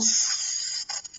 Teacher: las cuerdas vocales se juntan un poco, aunque no llegan a estar juntas. Esta se conoce como fonación, ¿no?, porque con una consonante sorda pertenece a los sonidos del habla, o sea, la persona está hablando.